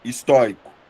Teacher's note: A sílaba tônica é a segunda sílaba